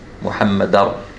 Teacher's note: But here, when I'm joining Muhammad or Muhammadan with the word Rasul, then I'm doing this. I'm dropping one of the harakatain here, one of the fathatain, and jumping straight to the ra.